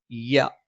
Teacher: നാവിന്റെ മധ്യഭാഗം മേലെ അണ്ണാക്കിൽ